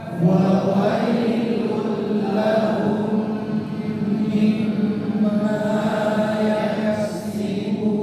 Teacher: mim tasydid lebih panjang daripada dua harokat